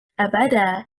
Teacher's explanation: Stressing on the second حركة, حركة الباء.